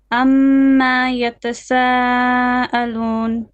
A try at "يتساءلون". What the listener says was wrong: Don't stretch the meme.